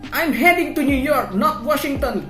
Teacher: the high pitch to indicate an informational contrast